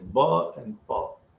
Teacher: ba and pa, they are pronounced both by using the two lips, so bilabial sounds.